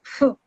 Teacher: you bring your lips close together. You try to pronounce p, but it's not a p. It's a fricative. So there has to be a friction.